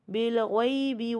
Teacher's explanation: غیب میں دیکھیے یا ساکن سے پہلے زبر ہے تو یا لین ہے یہاں